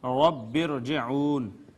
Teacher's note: یہ را ساکن تھی، ما قبل کسرہ اصلی آئی ہے لیکن اسی کلمہ میں نہیں ہے جس میں را ہے، یہ پچھلے دوسرے کلمہ میں ہے۔ اس صورت میں بھی را کو مفخم پڑھا جائے گا۔